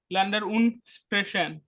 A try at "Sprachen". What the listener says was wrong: স্প্রেশন না, দেখে পড়ো, স্প্রাখেন।